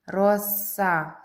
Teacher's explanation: Це твердий приголосний, тому що після нього стоїть голосний а, а він не пом'якшує попередні приголосний